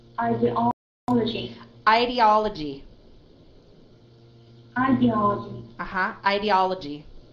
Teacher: The first stress is in the third syllable, and there is a second stress in the first syllable.